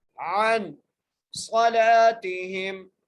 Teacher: صاد کو موٹا کر کے پڑھیں گے